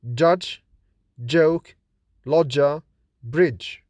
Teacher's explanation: Ch is voiceless and fortis, that is produced with more force than j. J is voiced and linus, that is, it is weaker in articulation than ch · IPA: /dʒ/